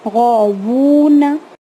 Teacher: واو جب کہتے ہیں تو واو میں لپس سے ادا کیا جاتا ہے, ٹیتھ سے نہیں. غوونا ایسے وی کے جیسا نہیں بولیں گے بلکہ ڈبلیو کے جیسا کہیں گے یا او کے جیسا کہیں گے.